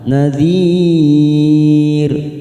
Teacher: nadhir mad arid disukun 4 harokat kita panjangkan